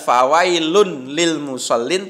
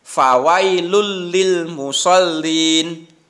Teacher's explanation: Jadi tidak fawailun lil musallin, tapi tanwinnya itu, lunnya itu hilang, diganti masuk ke huruf lam. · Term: idgham bila gunnah